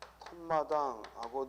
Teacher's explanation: 명사와 명사가 만나서 발음이 텀마당하고 니은이 첨가됐죠. 즉 명사와 명사가 만났고 니은이 첨가된 그런 발음을 보이니까 표기에 시옷을 쓰는 거죠. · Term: 사이소리 현상